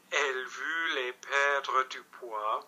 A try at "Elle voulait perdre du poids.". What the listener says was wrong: Longer again. That was very good. Don't hate me.